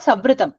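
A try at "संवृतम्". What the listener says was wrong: Don't close your mouth. Instead, touch your teeth. Touch the lower lip, back of your lower lips with your teeth. Samvritam. And make a nasal sound.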